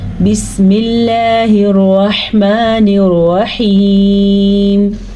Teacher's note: لفظ اللہ سے پہلے زیر کی وجہ سے لفظ اللہ کو باریک پڑھیں گے، موٹا نہیں پڑھیں گے